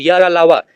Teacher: या और वा को अर्धस्वर, रा को लुंठित और ला को पार्श्विक व्यंजन कहते हैं। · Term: अंतःस्थ व्यंजन